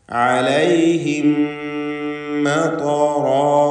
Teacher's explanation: സാക്കിനത്ത് അമീം ശേഷമുള്ള മീമിൽ പൂർണ്ണമായും ലയിപ്പിച്ച് മണിക്കണം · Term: ഇദ്ഗാം ഷഫവി